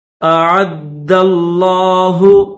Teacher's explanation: आइन को दाल के साथ मिलाएंगे और दाल को लफ्ज़ अल्लाह के साथ मिलाएंगे